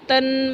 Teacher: त अघोष अल्पप्राण दंत्य ध्वनि जब न के साथ प्रयुक्त होती है तो नासिक्य ध्वनि न का प्रभाव उस पर पड़ जाता है। यानी कि जब दो ध्वनियाँ जो हम कह सकते हैं कि त जो है अघोष है और अल्पप्राण है और दंत ध्वनि है, जब इसके साथ न का संयोग होता है तो न क्या है, नासिक न के की ध्वनि नासिक का प्रभाव जो है उस पर पड़ जाता है।